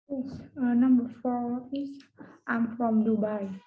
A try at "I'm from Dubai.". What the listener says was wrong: I'm from Dubai. So you can even go a bit weaker on from. I'm from Dubai. I know it looks like I'm from Dubai, but instead from just becomes from. I'm from Dubai. Not I'm from Hoi An or I'm from Hanoi. Doesn't sound fluent.